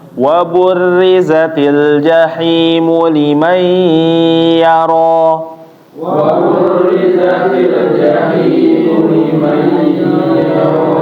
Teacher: Ya, ditahan ya Bapak, ketika nun bertemu ya ditahan, jangan langsung pindah